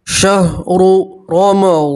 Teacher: रा के ऊपर पेश है, रा को मोटा पढ़ेंगे। यहाँ रा के ऊपर ज़बर है तो भी रा को मोटा पढ़ेंगे, पूर पढ़ेंगे।